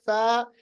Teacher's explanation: फा अदा करते वक्त जो ऊपर वाले दांत है सनाए उलिया को नीचे वाले होंठों के साथ मिलाते हैं